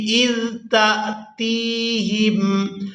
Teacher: تا کو حمزہ ساکن کے ساتھ ملائیں گے تو جھٹکے کے ساتھ ادا کریں گے۔ اس کے بعد تا کو یائے مدہ کے ساتھ ملاتے ہوئے کھینچ کر ادا کریں گے۔